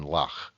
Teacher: The crenth does not have an English equivalent, but is most likely meant to be the voiceless velar fricative ch, as in lach